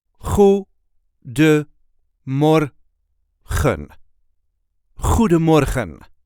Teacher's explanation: So you have a choice to either pronounce the N at the end or not.